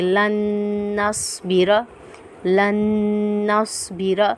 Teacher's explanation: نون پہ ہم غنہ کریں گے کیونکہ نون مشدد حالت میں ہے